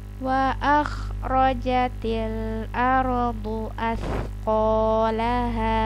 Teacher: Perhatikan, ini huruf kha. Ada serak-seraknya.